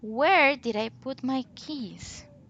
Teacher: the intonation falls at the end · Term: falling intonation